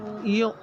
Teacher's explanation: اور آگے ہے یا اور اس کے آگے حمزہ اور حمزہ پہ ساکن ہے. جب حمزہ کے اوپر ساکن ہو تو جھٹکا دے کے پڑھیں گے. ہمیشہ جھٹکا حمزہ کے اوپر جب بھی ساکن آئے گا تو جھٹکا دے کے پڑھیں گے.